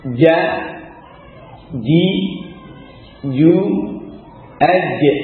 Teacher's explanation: huruf syajariyah dari tengah lidah dari syajarul famam